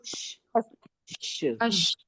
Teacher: जबान के बीच उसके मुकाबिल ऊपर के तालू से शीन अदा होता है